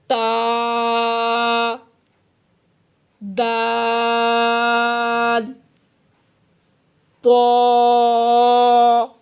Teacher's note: تا، دال، طا زبان کی نوک اور اوپر کے دانتوں کی جڑ سے۔